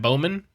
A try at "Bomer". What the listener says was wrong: You had it. You just take the W and flip it over.